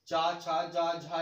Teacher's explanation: चा वर्ग बोला जाता है हमारे तालु से, ठीक, यानी तालव्य